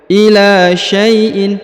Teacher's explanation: huruf sya diayun sekali karena terdapat ya sukun di depannya